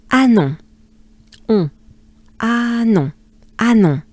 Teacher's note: yeah, no H. We start with a French A.